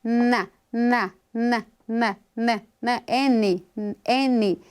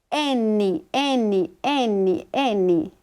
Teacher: A língua encosta lá nos alvéolos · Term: consoante nasal